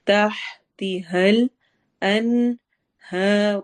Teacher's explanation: تح میں ہا کی آواز کو حلق میں ٹھہرائیں گے ، تحتها الانہار، ان میں نون کی آواز کلیئر ہوگی، خالدین،